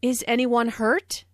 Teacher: This is a yes-no question, so the intonation rises at the end.